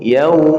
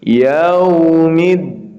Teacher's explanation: huruf wau sukun sebelumnya ada huruf yang berharakat fathah maka dibaca lin